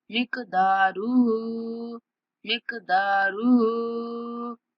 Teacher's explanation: दाल को थोड़ा खींचेंगे और हा को 3 सेकंड तक खींच के पढ़ेंगे